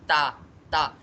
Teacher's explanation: جو میری زبان کی نوک ہے وہ اوپر والے دانتوں کے پیچھے والی سائڈ پہ لگے گی